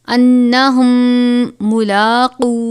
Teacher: میم ساکن کے بعد دوسری میم ہو تو اس میں ہم ادغام شفوی کا قاعدہ لگائیں گے، یعنی غنہ کر کے پڑھیں گے. انہم ملاقو میم مشدد بھی ہے، لام کے اوپر کھڑا زبر ہے، قاف کو پر پڑھیں گے.